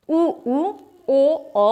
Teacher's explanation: इनको बोलते समय हमारे होंठ गोल हो जाते हैं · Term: वृताकार स्वर